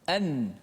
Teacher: Nun tu dibaca dengan izhar, dimatikan dengan betul dengan menekan pada makhrajnya